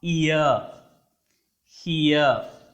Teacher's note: మనకి ఇంగ్లీష్ లాంగ్వేజ్లో 8 దిఫ్తాంగ్స్ ఉన్నాయి. ఒక వోవెల్ సౌండ్ ఇంకొక ఓవెల్ సౌండ్ మీదకి గ్లైడ్ అవుతూ ఉంటుంది. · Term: గ్లైడింగ్ ఓవెల్స్